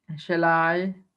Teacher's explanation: first one is unstressed and second one is stressed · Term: amic